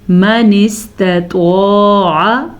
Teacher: توا کو پر پڑھنا ہے تا کو باریک پڑھنا ہے